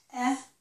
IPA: ɛ